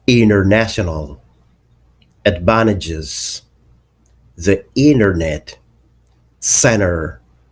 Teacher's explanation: since these two consonants are almost produced from the same place in the mouth pronouncing both of them right after the other will be difficult as a result t becomes silent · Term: the silent t